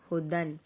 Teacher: یا کی کوئی آواز نہیں نکلے گی صرف ہا اور دال کی آواز نکلے گی